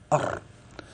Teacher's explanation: لاحظت أن الراء تخرج من طرف اللسان، والراء يدانيه لظهر أدخله، أي من ظهر اللسان.